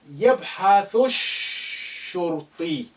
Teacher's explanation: يبحث Again, alif is silent because it's not at the beginning. Lam is silent because sheen, which is sun letter, after it, and is carrying the shadda. Therefore, you link the thu with the first sheen, which is carrying sukun.